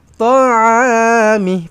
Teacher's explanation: Panjangkan a dua harakat. Mad asli ada alif kosong. Mih pendek sahaja.